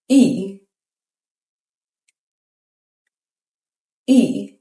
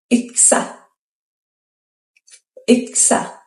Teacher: say E as in see, but round your lips like you're saying ooh. Your tongue stays high and forward. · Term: rounded front vowel